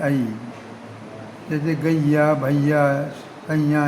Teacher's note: और ये जो है इसका वो एक उच्चारण जो है वो आई भी है, आई। जैसे गैया, भैया, सैया ये बोलते हैं तो इसमें ये ए का उच्चारण आई हो जाता है।